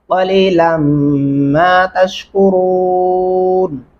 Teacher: قاف پڑھیں گے اور لام کو میم کے ساتھ ملاتے ہوئے غنہ کریں گے. جہاں ریڈ لفظ آپ کو دکھائی دے رہا ہے یہاں پہ غنہ لازمی ہوگا.